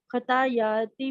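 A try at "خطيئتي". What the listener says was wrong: دیکھیں خطایاتی نہیں ہے، خطیعتی ہے. ٹھیک ہے خطیعتی پڑھیے. خطیعتی کیونکہ مد بھی آ رہا ہے نا اس میں.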